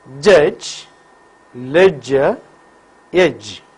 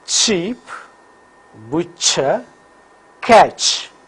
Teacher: Vocal cords vibrate for j. So j is voiced palato-alveolar affricate, while ch is voiceless palato-alveolar affricate.